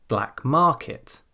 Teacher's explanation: the first word there, black, works like an adjective. So we stress the second word.